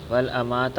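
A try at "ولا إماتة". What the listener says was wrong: ول نہیں یار، والا پڑھی جانا میں، ولا اماتہ، اور البتہ اسے ضرور موت دے دیتا۔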